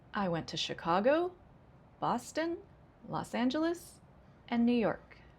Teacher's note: Rising, rising, rising, falling. That's a list.